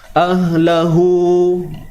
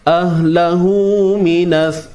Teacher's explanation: Tapi bila mana kita sambung ahlahu, hu tu jadi dua harakat. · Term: maksilah qasirah